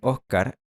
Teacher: la aspiración de la /s/ es una característica muy obvia y muy notoria de su dialecto